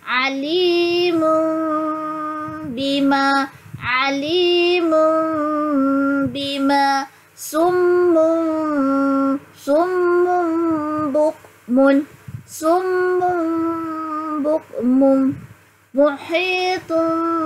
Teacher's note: menukarkan bunyi nun kepada mim berserta dengung. Okey, atau lebih mudah, kita bukan tutup mulut. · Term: ikhlab